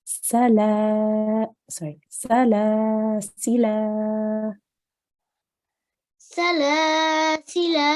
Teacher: The other option in this word is to pronounce the blank alif, okay, and elongate that last lam, make this into your alif mad